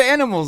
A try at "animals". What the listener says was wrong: Animals. Animals. Animals. You're not getting the A at the beginning. You're not getting animal. You get animal. You're just getting right to the end. anxious to get to the end. can't forget the A, dude.